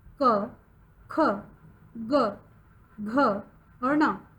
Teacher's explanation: इन्हें हम कंठ की ध्वनि से बोलते हैं। इनका उच्चारण स्थान कंठ है, इसीलिए यह क वर्ग में आते हैं।